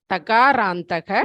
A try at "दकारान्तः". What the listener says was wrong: No, त नास्ति. It is dakaranta. How do you pronounce THE? How do you pronounce THE in English? The. So dakarantah. The is not very audible. So you have to consciously focus on your pronunciation.